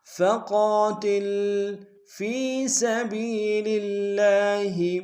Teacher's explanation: فقاتل فی سبیل اللہ، فی میں یا مدہ ہے ایک ہندار میں کھینچیں گے۔ سبی میں سین کی سیدھی باریک ہوگی، با کو یا کے سامنے لیں گے، یا مدہ اس کو بھی ایک ہندار میں کھینچیں گے۔